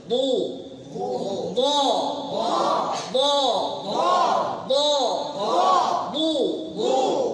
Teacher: জিহ্বার উভয় পার্শ্ব অথবা যে কোনো এক পার্শ্ব সামনের উপরে দুই দাঁতের মাড়িতে দুই পার্শ্বে চাপ দিতে হবে